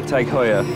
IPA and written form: ˌtæɡ ˈhɔɪ.ər (TAG Heuer)